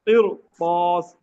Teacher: را ساکن ہے، ما قبل کسرہ ہے، لیکن جو را کے بعد کا حرف ہے وہ حرف مستعلیہ ہے، جن کو موٹا پڑا جاتا ہے